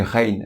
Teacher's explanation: Pour la lettre Rein, c'est équivalent au R français. Elle se prononce bien du fond de la gorge